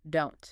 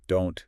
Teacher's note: Negative contractions like don't, can't, isn't they very often end with a stopped T. Okay, so tongue goes up, stops the air, no strong t sound, don't. Perfect.